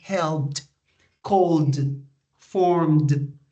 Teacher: when you pronounce call, the last sound that you pronounce is the L sound. So the ED is just pronounced like D.